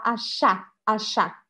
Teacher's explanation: a sílaba forte tá no final